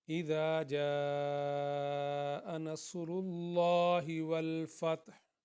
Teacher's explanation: دیکھیں یہ اس کو حمزہ یہ حمزہ کے نیچے زیر ہے، اس کو ایک حرکت کے برابر، ذا کو دو حرکت کے برابر، اور جیم مد جو ہے اس کو زیادہ لمبا کھینچیں گے 3-4 حرکت کے برابر